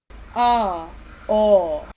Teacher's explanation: what makes that back and low so the tongue is sitting the bulk of the tongue is sitting back in the mouth and it's lower down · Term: back low vowels